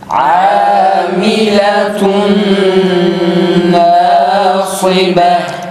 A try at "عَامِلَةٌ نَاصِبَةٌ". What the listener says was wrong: tekrar sad biraz daha kalın çıksın.